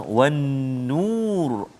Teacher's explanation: wajibul gunnah, nun musyaddadah, so dengung dua harakat